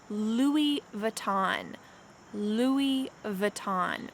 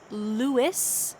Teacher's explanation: we do not say luis the s is lost instead we say louis vuitton